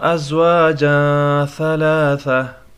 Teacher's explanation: ازواجا تنوین ہے، اس کے بعد ثا آیا ہے تو یہاں پر بھی اخفا ہوگا